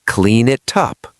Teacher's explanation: The N in clean moves to the I in it.